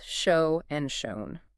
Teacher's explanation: Shown just attaches an N to that exact same O sound. It rhymes perfectly with bone or phone.